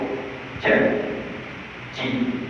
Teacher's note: bila nak sebut huruf jim, angin tidak keluar.